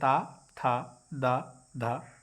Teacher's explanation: ता वर्ग जो है हमारा दंत से बोला जाता है।